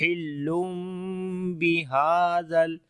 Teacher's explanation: میم کی آواز کو چھپائیں گے اور وہاں پر نرمی کے ساتھ پڑھیں گے